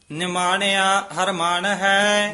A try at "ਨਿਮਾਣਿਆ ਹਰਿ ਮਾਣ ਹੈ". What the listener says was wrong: ਨਿਮਾਣਿਆ ਨਹੀਂ ਕਹਿਣਾ ਉਤੇ ਟਿੱਪੀ ਲੱਗੀ ਹੋਈ ਹ ਕਸ ਕੇ ਬੋਲਣਾ